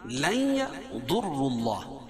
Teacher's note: نون ساکن کے بعد ادغام مع غنہ کے 4 حرفوں میں سے یا ہے تو یہاں غنہ کر کے پڑھیں گے